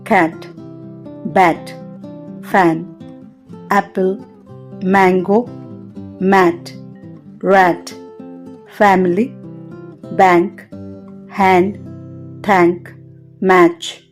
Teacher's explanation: నాలుక సగం తెరచి ఉండి పెదవులు వ్యాపించి ఉంటాయి